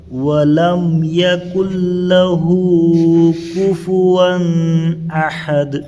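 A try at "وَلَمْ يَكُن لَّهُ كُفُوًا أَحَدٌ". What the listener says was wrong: ہاں اظہار کرنا ہے، آپ وہاں پر اخفا کر رہے ہیں۔ کفون نہیں ہوتا، وہاں اظہار ہے، کفون۔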